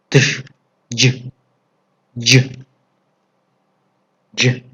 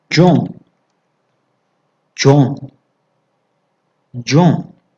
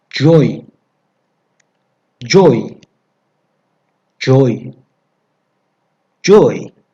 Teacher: Согласный звук «Дж» состоит из двух звуков «Д» и «Ж», которые произносятся неразрывно, слитно